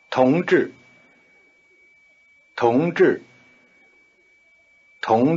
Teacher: the tone pattern is rising falling